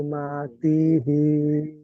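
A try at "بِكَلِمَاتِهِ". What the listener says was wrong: তি টান হয়ে যাচ্ছে বিকালি মাতি। তি টান হয়ে গেল। বিকালি মাতিহি, বিকালি মাতি। তি বলে টান হবে না, আমি কেমন বলছি, আমি হাটা পড়ি নাই, হাটা বাদ দিয়ে বলছি বিকালিমাতি হি।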